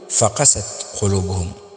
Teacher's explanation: وهذه القراءه الصحيحه ان تدفع القاف ولا تدفع الفاء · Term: النبر